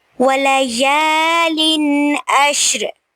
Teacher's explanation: وَلَيَالٍ عَشْرٍ، تنوین کے بعد آئین آ رہا ہے تو یہاں پہ اظہار ہوگا، تنوین کو ظاہر کر کے پڑھیں گے اور را کو ہم ساکن کر دیں گے وقف کی صورت میں.